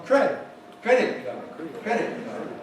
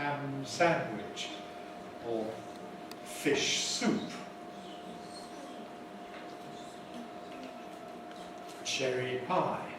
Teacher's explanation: have the second element as the strong one, and the first one as the weaker one